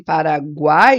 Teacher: quando a gente tem Paraguai esse tritongo é oral